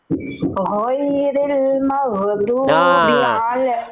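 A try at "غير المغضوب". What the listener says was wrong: Ghain sukun jangan maghdu. Ghain punya sifat memantul atau tidak bunda? Yang punya sifat memantul atau qalqalah hanya ada 5. Ba, jim, dal, tokof. Sering kita kenal dengan baju di toko. Jadi huruf ghain jangan sampai kita pantulkan. Ghairil maghdu.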